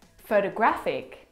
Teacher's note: The third example photographic the stress is on the third syllable.